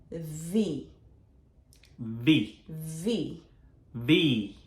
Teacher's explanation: 알파벳 V는 한국말에는 없는 단어로 윗니가 아랫입술을 물면서 소리가 나는 거예요. 근데 바깥의 아랫입술이 아닌 안쪽 아랫입술